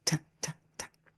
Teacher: The tongue is touching the back of the top two front teeth in order to pronounce the sound T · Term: tapping